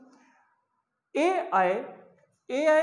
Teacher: अब जब इतना आप जान गए तो एक और जानिए, ए आय का यहां से कंठ और यहां से तालव्य दोनों का योग होगा, तो ए और अय का कंठ प्लस तालव्य, तालव्य के योग से, कंठ और तालव्य के योग से ए आय का उच्चारण स्थान हो गया।